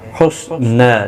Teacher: صاد قاف دونوں پر پڑھے جائیں گے، حروف مستعلیہ میں سے ہیں. حسنى نا کو ایک الف کی مقدار کے برابر کھینچ کر پڑھیں گے وقف کی صورت میں بھی اور ملانے کی صورت میں بھی.